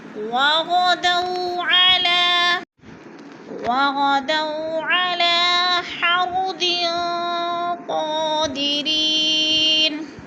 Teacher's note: غین موٹا ہے، دو پہ واولین ہے، لمبا بھی نہیں کرنا اور جھٹکا بھی نہیں دینا